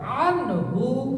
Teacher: নুন সাকিন স্পষ্ট হয়েছে, কোনো গুণনা হয় নাই, কারোর সাথে মিলেও নাই